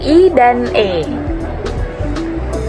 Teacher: vokal depan yaitu diucapkan dengan lidah di bagian depan mulut pada vokal I dan E.